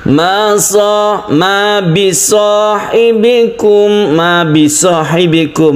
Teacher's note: Mim mati diikuti dengan mim. Mim idgham mimi , kami juga memperpanjangnya.